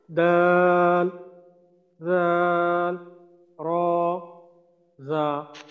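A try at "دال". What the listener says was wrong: আচ্ছা এই দাল দাল আর একটু টান দিতে পারলে আরো সুন্দর হবে, তবে ওই শুরুতেই যে বললাম যে হরফের নামগুলা আসলে এইভাবে যদি না টানি তাহলে সমস্যা নেই, কিন্তু যেহেতু মূলত এখানে টান আসে আর এইটা যখন কোরআন শরীফের মাঝে এই হরফগুলা শুরুতে আসে অনেক জায়গায় আসে, তো এখানে টানতে হয়, তো ওই অভ্যাসটা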